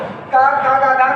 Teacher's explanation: का खा गा घा का उच्चारण स्थान है कंठ